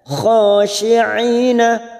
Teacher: ain yang berharakat kasrah bertemu ya sukun 2 harokat kita panjangkan